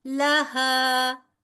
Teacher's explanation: لہا 2 حرکت برابر لمبا کیونکہ الف مدہ